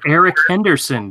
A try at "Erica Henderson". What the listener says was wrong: You said Eric.